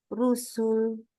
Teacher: lam di belakang enggak boleh tebal lam di belakang harus Tipis